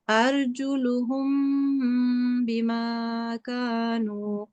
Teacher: So 2 seconds because it is ikhfa meme sakin.